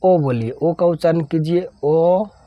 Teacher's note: sound ओ का ही आ रहा है य यानी बीच में इसके बीच में कहीं भी साउंड रुक नहीं रहा है यानी शुरू से लेकर अंत तक सिर्फ ओ ही आ रहा है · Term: स्वर वर्ण